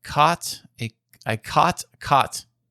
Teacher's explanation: speaker as well because it is primarily Western speakers that have the low back vowel merger which both of you exhibited when you said caught and caught the same way